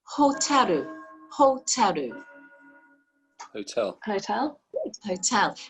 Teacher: the l sound in japanese is the same as the r sound they don't distinguish between the two so you will often hear more of an l sound and